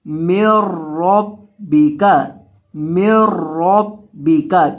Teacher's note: میم کو را کے ساتھ ملائیں گے، درمیان میں جو نون ہے اس کو نہیں پڑھیں گے، میم کو ڈائریکٹ آپ نے را کے ساتھ ملانا ہے کیونکہ یہاں ادغام ہو رہا ہے۔